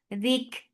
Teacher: Ba dal dik Dik for kasra, give E sound and then attach it kaf. Kaf will get sifa of hums, and hums is flow of breath.